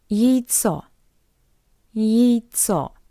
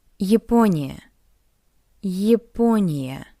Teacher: The unstressed ya. In an unstressed position, we read it as something between y and ye.